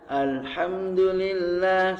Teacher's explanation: huruf hamzah ini ya adalah keluarnya dari pangkal tenggorokan atau aqsal halqi